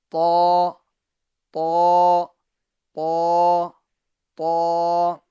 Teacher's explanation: زبان جب تالو کی طرف اٹھے گی تو یہ حرف آٹومیٹکلی پور یعنی موٹا ہو جائے گا